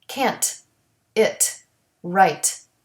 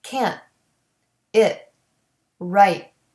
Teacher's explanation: The stopped T doesn't have the puff of air, but you have to put your tongue into the position of the T sound in order to make it correctly.